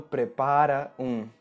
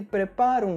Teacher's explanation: as duas palavras prepara e um se transformam em praticamente uma única palavra